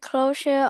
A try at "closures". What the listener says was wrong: Just make sure we have S at the end. So closures. Closures.